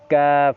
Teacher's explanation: অর্থাৎ জিহ্বার মাঝখান এবং জিহ্বার গোড়া এই দুটোটার মাঝখান থেকে কাফ উচ্চারণ হয়। এই দুটোটার মাঝখান গিয়ে উপরে তার সঙ্গে লাগবে।